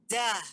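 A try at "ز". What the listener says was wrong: Za. Za. Ya, tidak boleh suaranya tidak boleh ditahan, Bu ya. Karena dia suaranya dialirkan. Za. Za. Azza. Itu ditahan, Bu. Sehingga dia kalau ditahan nggak keluar.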